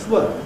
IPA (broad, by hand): θ.w